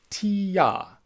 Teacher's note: As you say ti-ya, your tongue starts high and then it drops down low.